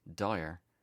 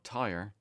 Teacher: the only difference in reality is that d is a voiced consonant and t is unvoiced